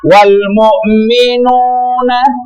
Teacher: mad tabi'i atau mad asli yang panjangnya 2 ketuk